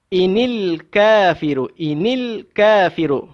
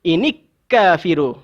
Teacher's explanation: lam itu wajib kita baca secara izhar. Kita kena bunyi. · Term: alif lam qamariyah